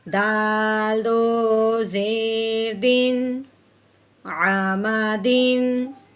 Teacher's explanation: ہاں جی دال کے نیچے پھر تنوین آ گئی، آگے عین حرف ہلکی میں سے ہے اس لیے تنوین پہ غنہ نہیں کریں گے.